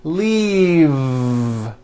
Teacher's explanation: an unvoiced F the word is leave with a voiced V keep the voicing going throughout the whole word and voice the V leave leave like that if you stop the voicing at the